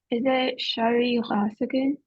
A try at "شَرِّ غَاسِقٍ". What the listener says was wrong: Yes, sharri ghas, not sharri ghasikin. Yeah, sharri ghasikin. Again, you can see it was sharrin, became sharri because of mudaf. Okay, so sharri ghasikin. Sharri ghasikin.